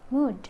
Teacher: D is voiced alveolar stop